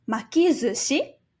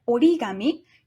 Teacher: the s sound becomes a z sound, and the ka sound becomes a ga sound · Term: Rendaku